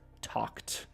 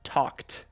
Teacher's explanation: Esa ed en esa palabra, T-A-L-K-E-D, suena como como una T